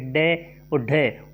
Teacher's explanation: जिसके उच्चारण में जिह्वा की नोक झटके से नीचे गिरती है तो वह उत्क्षिप्त या फेंका हुआ ध्वनि कहलाती है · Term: उत्क्षिप्त ध्वनियाँ